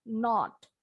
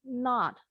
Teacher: Kalian boleh bilangnya dengan bunyi O yang monyong kayak orang Inggris